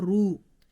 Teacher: When there is a Fathah or Dammah on letter Ra, we have to read it heavy, like Ra Fatha Ra, Ra Dammah Ru.